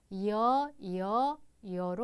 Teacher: 여는 이로 시작해서 어로 끝나게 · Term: 이중 모음